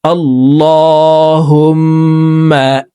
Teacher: লামকে ল বলে পড়তে হবে, কারণ আল্লাহ শব্দের আগের হরফে জবর আছে। হুম এখানে ওয়াজিব গুন্না, 3 সেকেন্ড পরিমাণ গুন্নাহ করে পড়ব, কারণ হরকতের বামে মিমের উপরে তাসদিদ আছে